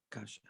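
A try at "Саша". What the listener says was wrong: It's not K, it's S.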